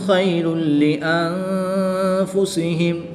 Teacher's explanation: دو پیش کی تنوین کے بعد لام حروف یرملون میں سے ہے تو یہاں پر ادغام بلا غنہ ہوگا یعنی کہ بغیر غنہ کے ادغام کر کے پڑھیں گے